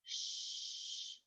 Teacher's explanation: You don't feel the vibration, so it's a voiceless sound.